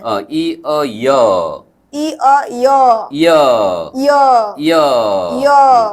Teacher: ইয় উচ্চারণের সময় ই কে হ্রস্ব করে অ কে দীর্ঘ করে উচ্চারণ করুন।